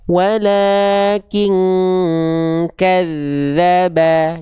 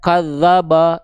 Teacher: Kafnya tipis vokal a. Dalnya tipis vokal a. Banya tipis vokal a.